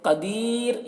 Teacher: یہاں پر را کو باریک پڑھیں گے کیونکہ را ساکنہ سے پہلے یا ساکن ہے، را ساکن سے پہلے جب یا ساکن ہو تو را کو باریک پڑھتے ہیں۔